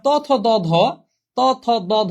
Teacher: সবগুলো উচ্চারণ করতে জিহ্বাটা দাঁতের মধ্যে লাগে। এইজন্য এগুলো সব হচ্ছে দন্ত বর্ণ।